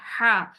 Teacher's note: हा में ठंडी सांस पैदा होती है पहले आप ठंडी सांस निकालेंगे और फिर उसको वहां वस्त हल्क यानी हल्क के दरमियान से निकालेंगे